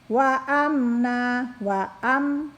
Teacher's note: nah di situ tidak mendengung ya, mim sukun bertemu dengan nun, izhar syafawi